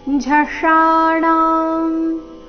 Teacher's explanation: ಮೂರ್ಧನ್ಯ ಶ ಆಕಾರದೊಂದಿಗೆ ದೀರ್ಘ, ಮುಂದೆ ಣ ಸಹ ದೀರ್ಘ.